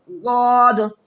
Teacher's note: زبان کی کروٹ کر کے اوپر کے داڑھوں کے جڑ میں لگائیں گے تو وہاں سے ضاد ادا ہوگا